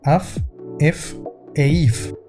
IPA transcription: af ef e if